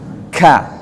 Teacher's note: Ya, huruf kaf. Ka-nya itu harus hames, mengalir nafas dari mulut kita. Ka, hamesnya harus jelas.